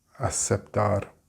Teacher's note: I think in Latin American Spanish, you make a s sound